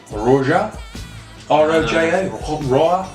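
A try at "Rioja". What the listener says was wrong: Definitely, there's definitely no J in there.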